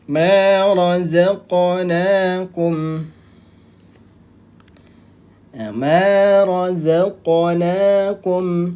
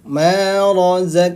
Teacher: huruf q termasuk huruf qqalah Jadi dibacanya jangan tidak memantul harus memantul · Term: Qalqalah